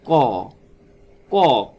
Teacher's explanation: কটা যখন বলছি তখন ক প্লাস এর মধ্যে একটা স্বর অ আসতেছে। ক, এটা কি হচ্ছে আমাদের, দেখবেন যে ফুসফুসের যে মানে কোমল তালুটা আছে, আমাদের কোমল তালুতে কি হচ্ছে, এটা একটা বাধা সৃষ্টি করছে।